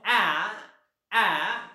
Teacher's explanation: जिभेचा समोरचा भाग उंचावला जातो. a समोरचा भाग उंचावला जातो.